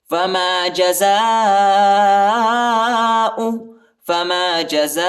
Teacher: زا کے بعد جو الف آیا ہے اس کے اوپر بڑا مد ہے، اس کو تقریباً 3-4 سیکنڈ تک کھینچیں گے اور حمزہ کو زیادہ نہیں کھینچنا ہے، ٹھیک ہے، فما جزاء،